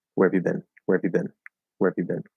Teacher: so you just kind of barely hit that r